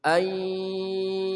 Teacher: nun mati bertemu ya masukkan ke dalam huruf ya disertai dengung atau gunnah